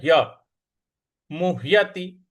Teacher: ह और य आधा ह और आधा य मिलकर के बना हुआ है